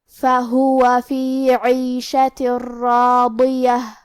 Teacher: فا پہ زبر ہے، ہا پہ پیش ہے اور پھر واو پہ زبر ہے، تو ہمیں یہ تینوں حرکات کو برابر سا ادا کرنا ہے۔ کلمت عیشہ میں حرف العین کے نیچے زیر ہے تو ہم زیر کو ظاہر کریں گے، آخری میں حرف التا کے نیچے تنوین زیر ہے، پھر حرف الراء آتا ہے۔